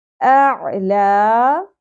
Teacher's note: عین وسط حلق سے ادا کیا جاتا ہے باریک آواز کے ساتھ